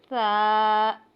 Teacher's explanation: तो हमने बगैर फिसलन बगैर सिटी के इसको अदा करना है और नरमी के साथ अदा करना है। ता जुबान की नोक और ऊपर के दांतों के किनारे पे लगाने से अदा होगा।